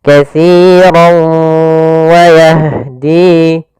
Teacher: Maka katsirau masuk sambil ke rongga hidung kita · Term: idgham bi gunnah